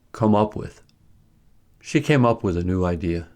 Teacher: The three-part phrasal verb is stressed in the same way as the phrasal verb with double stress. That is, the adverb carries the main stress, and the verb carries the secondary stress. There is no rhythmic stress shift since the adverb is immediately followed by a preposition, which is normally unstressed.